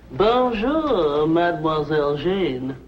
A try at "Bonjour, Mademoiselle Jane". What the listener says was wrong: That's very good. Except for the mwah. Must be soft. Mwah.